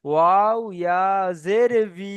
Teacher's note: পরিপূর্ণ বি হবে না, দুটা ঠোঁট অসম্পূর্ণ মিলিয়ে ভি উচ্চারণটি হয়।